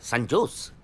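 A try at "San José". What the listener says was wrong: সান হোসে, সান হোসে, হ্যাঁ সান হোসে। জের উচ্চারণটা এইচ এর মতো হবে, সান হোসে।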